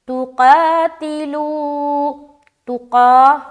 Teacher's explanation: قاف کو موٹے طریقے سے کھینچتے ہوئے ادا کریں گے